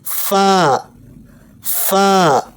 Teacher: اوپر کے دانت نیچے والے ہونٹ پر رکھ کر پڑھیں گے